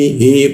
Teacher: Hi posisinya ditenggorkan bagian bawah ya.